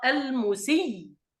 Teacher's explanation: أن نبدل هذه الهمزة ياء وندغم الياء الأولى في الياء الثانية، ثم نسكن للوقف فنقرأ المسي.